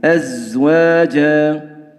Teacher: أزواجا لابد من مراعاة صفير الزاي، صفيرها صاد وزاي سين.